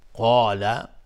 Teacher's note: قاف از حروف استعلاء غلیظ تلفظ میشه، الف هم تابع قاف غلیظ